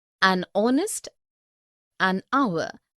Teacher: begin with the vowel sound as the initial consonant h is not pronounced